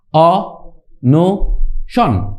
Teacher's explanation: উচ্চারণ করতে পারছি অনসন অন সন বলছি না অ নো সন সনটা আমরা একসঙ্গে উচ্চারণ করছি শেষে ব্যঞ্জন থাকছে তাই এটা রুদ্ধদল